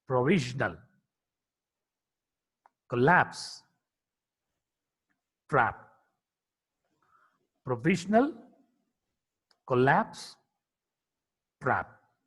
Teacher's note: P is a voiceless bilabial plosive consonant.